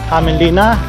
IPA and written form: ˈhæmeːnˌlinːɑ (Hämeenlinna)